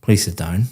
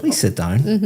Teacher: For example, when you came in here today and I said, "Please sit down." Very flat intonation going down. · please sit down, my intonation is going up